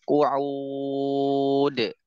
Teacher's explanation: Nah, ini kan qu'udun qu'ud ada qalqalah terakhirnya. · Qu'ud misalnya waw mad 'adad lisukun isnan aw arba aw sittun harakat dal sakinah muqalqalah 'inda al-waqf qu'ud.